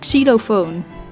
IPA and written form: ˌksi.loːˈfoːn (Xylofoon)